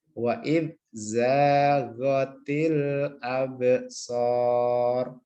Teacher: Baknya mantul nggih, qalqalah.